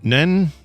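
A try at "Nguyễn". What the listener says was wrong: I don't even think you put an N sound at the beginning. I think it's just Nguyen. Nguyen. Sort of. It's just Nguyen. Not even, not yen, but Nguyen.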